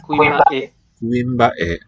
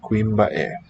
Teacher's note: I hear a downstep to that last syllable.